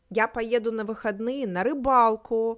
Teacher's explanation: in a regular conversational Russian we would rise our intonation for engagement